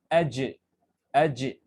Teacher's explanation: آپ کے زبان کا بیچ کا حصہ جو ہے بیچ کا جو حصہ ہوتا ہے یہ روف آف دا ماؤتھ سے ٹچ کر رہا ہے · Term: جیم کا مخرج